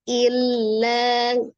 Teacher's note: Illa ada tasdid lam ya. Lamnya bertasdid huruf lam itu sifatnya adalah tawassut atau bainiyah. Jadi jangan terlalu ditekan illa, jangan juga terlalu dilepas illa, tapi tengah-tengah illa ya.